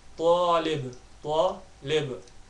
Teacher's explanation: There will be an echo between the lam and the ba. The letter lam will join onto the ba.